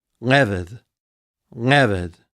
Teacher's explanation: With the accent on the first syllable, we have leved, leved.